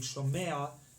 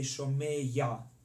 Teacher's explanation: instead of saying Shomea, they say Shomeya. They put a yud in there also.